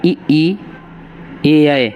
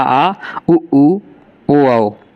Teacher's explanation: ई, ए, अय, ये अग्र स्वर होते हैं, और पश्च स्वर होते हैं बड़ा आ, उ, ओ, औ